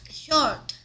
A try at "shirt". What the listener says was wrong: 입술을 동그랗게 만드는 게 아니라니까. Short가 아니고 shirt. Shirt. Shirt.